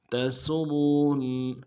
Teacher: تا کو نون سے ادا کرنا ہے، سین کی سیدھی باریک ہوگی، سین کو را کے سامنے لانا ہے، را کے اوپر تشدید زور دیں گے. تسرون، اور را کو موٹا کرنا ہے، آگے نون کے سامنے لانا ہے، نون کے اوپر تشدید زور دیں گے